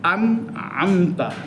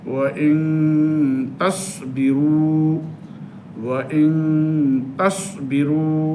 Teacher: যেমন ওয়া ইন তাসবিরু, ওয়া ইন তাসবিরু, এখানে ইন টু গুন্না হলো, একবার পরিষ্কার না, একবারে মিলেও যায়নি, এর মাঝামাঝি গুন্নাটাই হলো ইখফার গুন্না, যেটা নাক থেকে আসবে